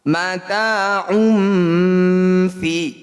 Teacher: bunyi dhammah tanwin kita dengungkan 2 harokat. Jadi saat dengung lisan kita sudah ada di huruf fa. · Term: ikhfa